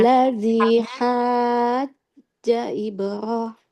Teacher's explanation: Nah, sudah bagus, tapi hanya sedikit di ha aja. Haknya 6 harokat, jimnya nggak boleh panjang.